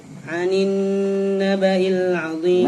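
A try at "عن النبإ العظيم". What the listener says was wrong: Naba'il, kasrahnya kurang jelas. Naba'il 'azim.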